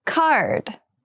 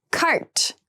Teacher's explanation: card has the voiced D sound and cart has the unvoiced T sound